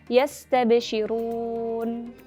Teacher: Huruf nun bersukun pada akhir kata memiliki sifat bainiyah, maka ia lebih lama pengucapannya dibandingkan huruf ba bersukun dan yang bersifat syiddah. Dan juga huruf nun bersukun dibaca lebih singkat dibandingkan dengan huruf sin bersukun yang memiliki sifat rokhawah.